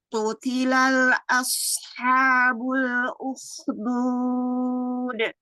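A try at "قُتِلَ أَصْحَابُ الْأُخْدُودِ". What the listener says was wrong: Utila, enggak ada dalam sukun di situ.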